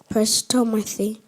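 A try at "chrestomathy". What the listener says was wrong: Crestomathy. No, not press. Crest.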